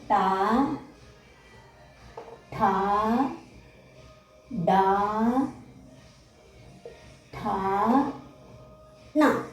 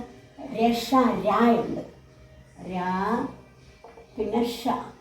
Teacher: മൂർഥന്യ മൂർഥാവിന്റെ സഹായത്തോടുകൂടി ഉച്ചരിക്കുന്നത് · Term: മൂർധന്യാഹ